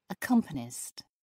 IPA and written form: əˈkʌmpənɪst (accompanist)